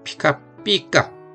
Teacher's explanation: 반탁음도 뒤로 오면 카행과 다행처럼 발음이 강해질 수 있다